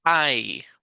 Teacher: la i larga tiene un recorrido un poquito más exagerado es I verdad como de ice cream o cuando yo digo